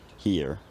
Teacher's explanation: The r becomes an approximant, here, and maybe around the same time or shortly after, the vowel sequence collapses into a centering diphthong, here, here.